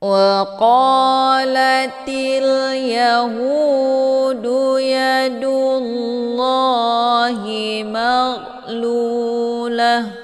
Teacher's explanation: Ini huruf ghin, dibacanya secara dialirkan. Letak posisi huruf gha ini yaitu di tenggorokan bagian atas. Jadi dialirkan, bukan dipantulkan.